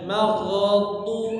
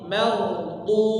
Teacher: huruf dad yaitu di pinggir lidah dengan gigi gigi Graham yang atas jadi ditempelkan salah satu atau keduanya mau yang kanan aja atau